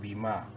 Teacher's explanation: الف مدہ ہے، میم کو ایک الف کے برابر لمبا کریں گے